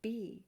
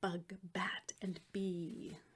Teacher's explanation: B it bounces our lips like in bug bat